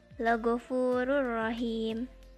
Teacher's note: Dhammah tanwin bertemu ro. Hukum tajwidnya idgham bila gunnah, dibacanya melebur.